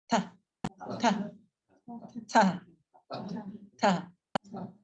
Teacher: So in English, we don't actually do this. We don't actually put our tongue to our teeth. And in Sanskrit, you do. We're like real close.